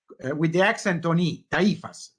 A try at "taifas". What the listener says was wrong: No, with the accent at the end. Tai, and it's both A and I. It's taifas.